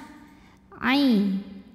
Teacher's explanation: ain dari tenggorokan bagian tengah. Ain, bukan i tapi ain.